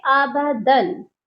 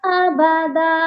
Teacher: سب سے پہلے 2 زبر کا وقف ہے، جو کہ ایک الف جتنا لمبا کر کے پڑھا جائے گا۔ یعنی جب بھی لفظ کے آخری حرف پر 2 زبر ہو اور آپ وقف کرنا چاہتے ہیں یعنی آگے نہیں پڑھ سکتے، تو ایک الف جتنا لمبا کر کے وقف کریں گے۔